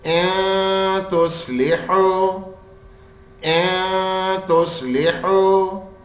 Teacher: نون کی آواز نہیں آنی چاہیے، بس صرف غننے کی آئے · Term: غنہ